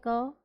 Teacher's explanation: आराम से हो रहा है बहुत जल्दी और कोई कंपन नहीं है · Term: अघोष